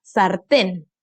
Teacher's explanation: Aquí se carga la voz, en la última. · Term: aguda